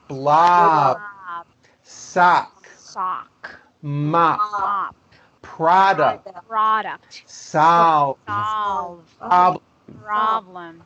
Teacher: Did you know that that there are words in English that are spelled with an O but are pronounced as a? So, even though these words that I'm about to show you are all spelled with an O, we pronounce all of these vowels with an A.